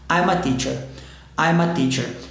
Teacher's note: Emendei esse M com A.